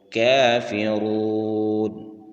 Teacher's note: را کے بعد واو مدہ ہے، اس کو بھی 1 الف کی مقدار کھینچ کر پڑھیں گے، اور را کے اوپر پیش ہے اور اس کو موٹا کر کے پڑھیں گے۔